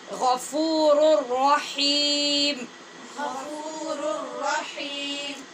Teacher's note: غفیم نہیں پڑھنا، ناک میں آواز نہیں جائے گی